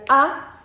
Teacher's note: Su posición de la lengua es central, no se mueve, no obstruye, no se levanta, no nada. Y el redondeamiento de los labios no existe. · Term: vocal a